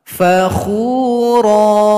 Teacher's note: ra dihilangkan salah satu harokat, panjangkan 2 ketukan. Cara memulainya, karena hamzah wasal dekat dengan lam, alif lam, maka barisnya di atas.